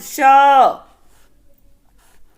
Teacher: बड़ा सा का जो उच्चारण स्थान है वो है तालु